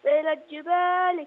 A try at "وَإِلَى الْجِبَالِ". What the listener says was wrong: وإلى ال ما نقول وإلى الج. وإلى الجبال.